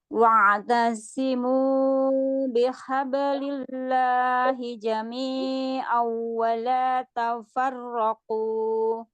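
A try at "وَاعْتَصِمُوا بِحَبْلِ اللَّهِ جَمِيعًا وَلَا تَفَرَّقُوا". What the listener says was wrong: Lagi wa'tasimu, jangan ada tasdid.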